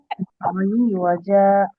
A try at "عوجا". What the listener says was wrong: আই টান হবে না আপু, আইন জেরে আই ওয়াও জবর ওয়া, আইওয়া, আইওয়াজা।